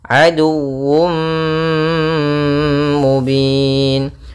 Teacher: tanwin yang dimasukkan ke huruf mim, tapi masih menyisakan suara sedikit daripada huruf tanwinnya. Sehingga di sini idghamnya kita menggunakan dengan idgham naqis. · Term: idgham bi gunnah